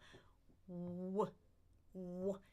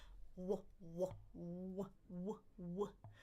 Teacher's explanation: I'm circling my lips. Ooh, they're rounded, but my tongue is way in the back, right? So w. You can feel the back of your tongue touching that soft palate in the back there, right? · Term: co-articulated